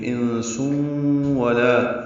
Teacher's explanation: تنوین کے بعد واو آنے کی وجہ سے ادغام ناقص ہوا ہے، سین کو واو سے ملا دیں گے ، آواز ناک کے بعد سے مل جائیں گے، انسون ولا،